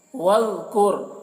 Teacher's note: واذکر، ذال کو بہت باریکی کے ساتھ ادا کریں گے اور ذال کو ادا کرتے وقت خیال رکھنا ہے کہ اس میں قلقلہ نہ ہونے پائے، یعنی وذکر، وذکر ایسے نہیں کرنا ہے۔